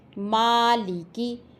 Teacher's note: دونوں ہونٹوں کے ملنے سے میم ادا ہوتا ہے۔ مالکی، یہاں میم دونوں ہونٹوں کے ملنے سے ادا ہوگا۔